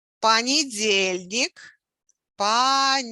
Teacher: So the stress is on the second from the last syllable.